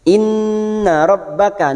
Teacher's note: nun yang bertasdid gunna musaddada kita tekan selama 3 harakat. Inna rabbaka masuk ke huruf ba yang bertasdid rabbaka.